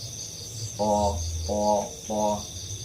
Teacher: Kita rasakan ketika membaca po itu lidahnya menempel di atas langit-langit.